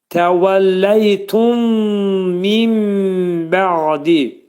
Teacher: Burada nun bəyə yetişdikdə mim hərfinə çevrilir. Mim hərfinə ağız yumularaq 2 saniyə müddətində hərfin məxrəcini bildiririk. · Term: iqlab